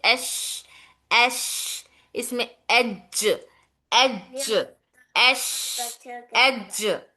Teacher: जीम और शीन भी एक ही जगह से जबान के दरमियानी हिस्से से जबान का दरमियानी और तालू के दरमियानी हिस्सा दोनों टच होकर हर्फ जीम और शीन अदा होता है